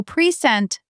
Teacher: The unstressed syllable gets shortened, and the vowel often gets swallowed into a very short, lazy sound. So present, the second syllable is quick, soft, like sent but shorter.